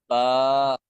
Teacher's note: دونوں ہونٹوں کے تری والے حصے کو ملانے سے با ادا ہوتا ہے